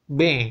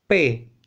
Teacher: B, P sama-sama di bibir ya. B, P sama-sama di bibir, kemudian sama-sama dihambat, bedanya yang satu berdengung, yang satu lagi tidak berdengung. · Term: bunyi bersuara